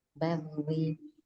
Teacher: Baknya tarkik, ro-nya dibaca tarkik. Jadi nggak ada yang dinaikin.